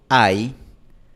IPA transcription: aj